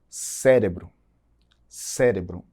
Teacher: Em português eu digo cérebro, cérebro. A sílaba tônica mais forte vai estar lá no começo da palavra. Então isso é uma heterotônica.